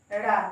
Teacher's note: ड़ा नाक और मुंह से बोला जाता है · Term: पंचमाक्षर